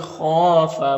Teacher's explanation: خا حروف مستعلیہ میں سے پر پڑھیں گے